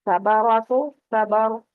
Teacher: تو صبر میں را ساکن جو ہے وہ پر پڑی جائے گی